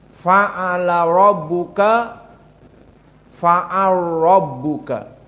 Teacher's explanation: di sini masuk kepada idgham alkabir yang kedua menjadi faalabuka faalbuka maka pada ro masuk lam melebur lam menjadi ro maka ro musyaddadah